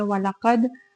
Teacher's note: وَلَقَدْ، قد میں دیکھیں دال ساکن ہے، حروف قلقلہ میں سے ہے تو اس پہ ہم قلقلہ کریں گے اور قاف کو پر ادا کریں گے۔